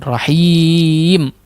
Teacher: Perlu diperhatikan juga seharusnya him ketika dimadkan tidak ada pengaruh di khayshum. Tidak ada berperan khayshum di situ. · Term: mad arid lisukun